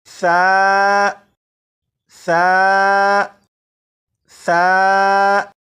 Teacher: زبان کی نوک اوپر کے سامنے کے دانتوں سے لگانے کے بعد اس حرف کو پڑھے گا تو یہ حرف بالکل صحیح پڑھا جائے گا۔ جیسے سا سا سا، آپ بھی اسی طرح 4 مرتبہ پڑھے گا، لیکن پڑھنے سے پہلے آپ اس بات پر توجہ دیجیے گا کہ زبان کی نوک دانتوں سے لگ جائے، اس کے بعد پڑھنا شروع کیجیے گا، بالکل درست پڑھا جائے گا۔